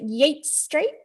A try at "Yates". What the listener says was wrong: Yeah, Yates. Yeah, so it's spelt the same as the poet, but pronounced the same as the gardening seeds.